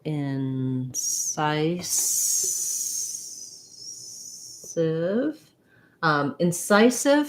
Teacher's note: incisive has second syllable stress and the letter c says the s sound which we associate